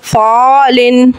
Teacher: इख्फ़े का कायदा है यहाँ पे भी, और एक अलिफ गुन्ना करके पढ़ेंगे। नून साकिन के बाद सौद हुर्फ़े इख्फ़ा का है।